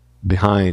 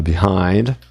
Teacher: A tônica está lá marcada no hind.